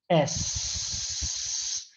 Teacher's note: S is a voiceless sound, so it doesn't involve the vocal cords. You can check it out by put your fingers on your throat.